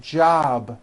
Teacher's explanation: It's not jop with an unvoiced P. Keep the voicing going throughout the whole word. Job with a voiced B ending.